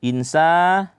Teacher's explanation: Di sini ikhfa ya nunnya kita samar-samarkan